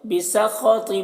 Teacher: خا کو پر پڑھیں گے، طا کو پر پڑھیں گے